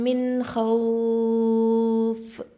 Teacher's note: அப்போ இங்கே என்ன சட்டம், மத்துல்லீன் சட்டம் வரும். மத்துல்லீன்னா இது 4 ஹரக்கத் அளவுக்கு நம்ம நீட்டி நிப்பாட்டலாம்.